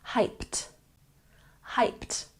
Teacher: even though it has the Ed ending it makes the T sound